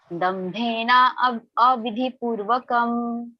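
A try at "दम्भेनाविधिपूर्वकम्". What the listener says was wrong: When you have already told dambhena, then you should say dambhena vidhipurvakam.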